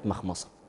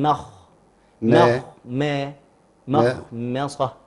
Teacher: الميم مالها مرقق، الخاء مفخم، الصاد مفخم